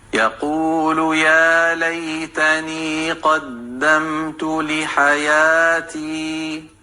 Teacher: یا ساکن ہے اور یا ساکن سے پہلے لام پر زبر کی حرکت ہے، تو یہاں پر لین ہو رہا ہے، لین کو نرمی سے ادا کرتے ہیں · یا کے اوپر کھڑی زبر ہے یہ، اور اس لیے یا کو 2 حرکت لمبا کریں گے، 2 کاؤنٹس لمبا پڑھیں گے۔